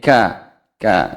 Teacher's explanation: kafnya ada sedikit udara yang keluar